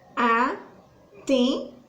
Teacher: O N, ele perde esse som na hora da fala e o E, ele ganha tipo que um acento. Então, fecha o som desse E igual eu fechei o som de campo.